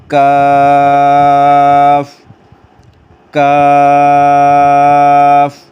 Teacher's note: قاف جو موٹا کاف ہے اس سے تھوڑا سا آگے جہاں پر ہمارا تالو ہوتا ہے وہاں پر اگر زبان کی جڑ لگے گی تو پھر یہ کاف باریک والا ادا ہوگا